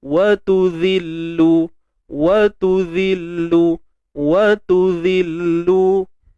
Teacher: Zal kena keluar ujung lidah. Okey, makhraj zal kan keluar ujung lidah.